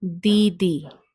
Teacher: The D sound here is a dental sound. So the tip of the tongue is right behind the teeth while pronouncing this particular letter.